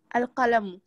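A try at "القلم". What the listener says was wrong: Bien.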